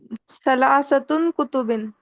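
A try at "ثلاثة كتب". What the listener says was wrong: सलासतुन नहीं, सलासतु कुतुबिन, ठीक है, उसका तनवीन नहीं रहेगा।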